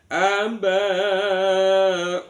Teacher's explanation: Mimnya wajib dibaca jelas di bibir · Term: izhar syafawi